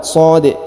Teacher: huruf di dibaca pantul ya.